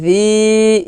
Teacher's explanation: জি পাতলা হবে, জিব্বার আগা উপরে দাঁতের আগার সঙ্গে লাগিয়ে পাতলা করে উচ্চারণ করতে হবে।